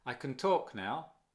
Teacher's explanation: Can, muy suavecito, casi no se nota. Suprimido la entonación.